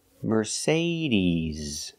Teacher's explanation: is not s like Star it's Z like zebra Mercedes Mercedes put the stress on the second syllable